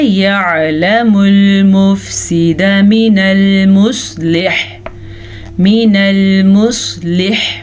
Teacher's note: اب ہم وقف کریں تو حا کی آواز ضرور آنی چاہیے, خواہ ہم اس کو ساکن کر دیں